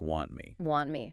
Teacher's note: the T at the end of want is also typically dropped before the M sound in me. So, want me becomes more like want me. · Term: disappearing consonants